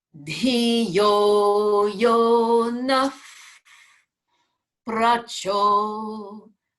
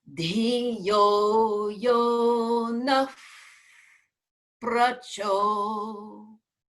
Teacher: which is that breath when it precedes up p is to make the visarga come out between almost pursed lips as though we were almost going to whistle or blowing